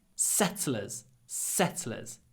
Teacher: the e is really short because it is between глухой с and глухой ц. Unvoiced s and unvoiced t.